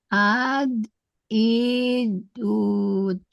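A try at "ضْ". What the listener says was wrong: Nah, tambah tebalnya lagi, do tebal.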